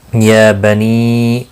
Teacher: نی یہاں پر مد منفصل ہے، 3 الف کے برابر کھینچ کر پڑھیں گے۔ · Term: کھڑی زبر